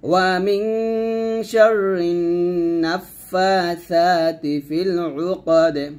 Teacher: ওয়া মিন শাররিন এর আগে নুনকে ধরবে গুন্না হবে ওয়াজিব গুন্না